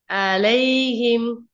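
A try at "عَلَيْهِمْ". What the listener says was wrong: இல்ல நீங்க ஐன சொல்லி பாருங்க ஐன் தான் பிரச்சனை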